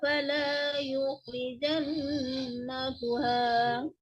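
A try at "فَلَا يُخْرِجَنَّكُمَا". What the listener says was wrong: Nakuma ya. Baca nakuha ya barusan ya. Mim itu, mim. Nakuma.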